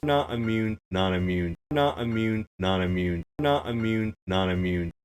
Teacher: we can hear this same speaker varying between traditional flapping and the new hard attack / glottal T